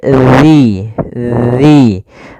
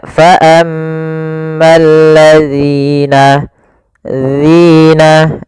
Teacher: ujung lidah kita kita tempelkan dengan gigi atas agak kita keluarkan sedikit sehingga berbunyi dzi dzi maka faammalladzina dzina. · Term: huruf dalal